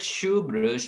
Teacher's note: the word shoe brush begins and ends with the palatal sound sh